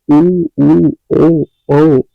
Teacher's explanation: इधरउधर आप अपना इत्यादि वृत्ताकार स्वर ऐसे स्वर जिनके उच्चारण में ओठों का आकार गोल हो जाता है।